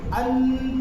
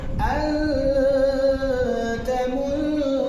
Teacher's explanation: نون ساکن کی آواز کو ناک میں چھپا کر کے پڑھنا ہے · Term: اخفا